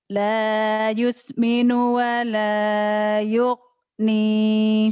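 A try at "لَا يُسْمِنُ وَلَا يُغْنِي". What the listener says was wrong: Yugni. G-nya kurang mantap. La yusminu wala ghafur. Maghrib. Kalau Jawa kan maghrib. Maghrib. Yugni.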